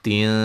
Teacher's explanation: نون تنوین کا باریک اخفا ہے